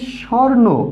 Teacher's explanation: এই শব্দের আগে স্ব রয়েছে এবং তারপরে উ রয়েছে, এই উ ধ্বনিটি লোপ পাচ্ছে। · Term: মধ্য স্বরলোপ